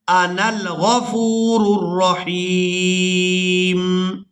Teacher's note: ہم نے نون کو لام ساکن کے ساتھ ملا دینا ہے، درمیان میں جو الف ہے اس کو ہم نے ادا نہیں کرنا. نون لام زبر نل، انل حمزہ زبر آ، نون لام زبر نل، انا الغفور الرحیم.